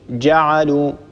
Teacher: هكذا لابد أن ننطق الجيم شديدة